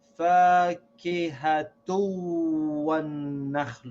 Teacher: We should read this waw as if it has a shad, and we should drop the noon sound on this tanween.